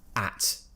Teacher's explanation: I'm spreading my lips slightly, but my tongue is right at the front of my mouth at the bottom. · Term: forward-facing vowel